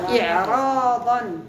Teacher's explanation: وكين السكون ولكن فخمت هاته الراء بسبب الضاد المستعليه